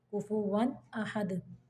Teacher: तनवीन को या नून साकिन को गुन्ना नहीं करना बल्कि सिर्फ ज़ाहिर कर देना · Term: इजहार